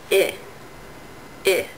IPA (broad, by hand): ɪ